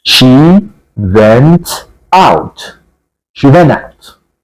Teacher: next word starts with a vowel sound again in American English we do not tend to pronounce that t sound